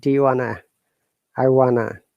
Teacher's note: do you becomes do ya when you're pronouncing and connected